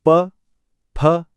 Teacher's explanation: बिना होठों को मिलाए आप प बोल ही नहीं सकते।